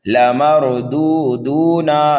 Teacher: ائنا لمردودون، را کو پر پڑھیں گے، را ساکن سے پہلے زبر ہے، پہلے دال کو اور دوسرے دال کو دونوں کو کھینچ کر کے پڑھیں گے، نون کو جلدی پڑھیں گے۔